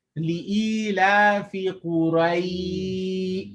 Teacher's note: it's pronounced with the sound that's between a fatha and a kasra, known as a majhul sound, or more like an a sound.